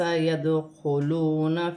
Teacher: واو ساکن سے پہلے پیش ہے تو واو مدہ بنے گی، اسے 1 الف کی مقدار کھینچ کے پڑھا جائے گا